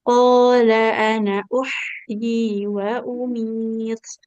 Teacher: nunnya walaupun fathah ketemu alif ini nggak boleh dibaca panjang karena di atas hamzah, di atas alifnya ada shifar ya.